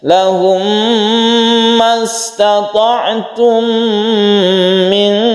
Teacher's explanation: idgham mimi yang kita panjangkan karena membentuk tasydid mim yang membacanya itu gunnah. Lahum, kita tahan membacanya.